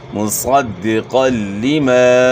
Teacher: اور قاف کے اوپر 2 زبر کی تنوین ہے، 2 زبر کی تنوین کے بعد حروف یرملون میں سے لام ہے، تو یہاں ادغام بلا غنہ ہوگا، یعنی غنہ کے بغیر ادغام ہوگا